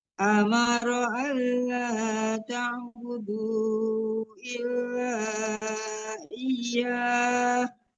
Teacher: boleh sampai 6 harakat itu namanya mad arid disukun juga kalau kita mematikan ha